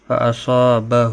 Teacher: تنوین کے بعد حروف اخفا کا فا ہے اخفا حقیقی ہوگا. فاصابہ ہو ہا کے اوپر الٹا پیش ہے ایک الف کے برابر کھینچ کر پڑھیں گے